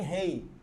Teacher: A vogal E e a vogal I. Sendo que a vogal E é tônica, por isso que ele é vogal. Enquanto que a vogal I é átona, é fraca. Então, foneticamente, a gente representa essa semivogal I por esse fonema aqui.